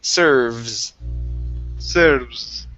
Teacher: give me a good V sound here on serves instead of serb with a B. It's V. Serves.